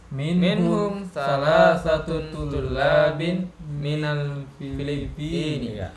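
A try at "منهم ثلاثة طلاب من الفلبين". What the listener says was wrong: Thalathatu, ya, bukan salasatun. Minhum thalathatu tullabin minal Filippini.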